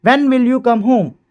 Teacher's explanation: WH questions have a falling tone at the end. और जो WH question होते हैं उनके आखिरी में जो टोन होती है फॉलिंग होती है।